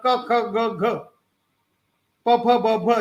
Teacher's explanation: 4 series of occlusive consonants: unvoiced, unaspirated, voiced, unaspirated, unvoiced, aspirated, and voiced, aspirated.